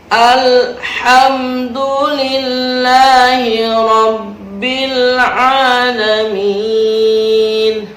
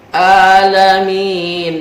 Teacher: Ada huruf ain di situ ditegaskan, jangan alif tapi ain. Alamin. Terkadang banyak sekali yang mengaji Al-Quran dengan intonasi huruf alif.